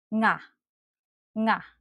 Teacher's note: To produce the nang sound, try to do this. Push your tongue back and up, making sure the back part of your tongue is curled and almost touches the molar and the roof of your mouth to produce a nasal sound. Then add the vowel after it.